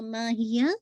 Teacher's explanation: ما 2 کاؤنٹ، ہی 1 کاؤنٹ، یا ہا کو واضح کریں گے